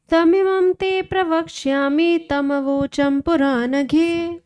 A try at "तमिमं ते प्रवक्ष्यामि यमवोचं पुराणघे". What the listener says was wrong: तम नहीं, यम है। तमिमं ते प्रवक्ष्यामि यमवोचं पुराणघे।